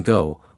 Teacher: Back vowels such as O in blue and O in go require rounding the lips